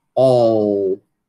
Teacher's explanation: uma característicazinha de U nesse L · Tô fazendo com um L escuro do jeito que é para ser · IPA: ɔ:l